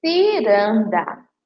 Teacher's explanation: Você ouve o som do si, com forte entonação no i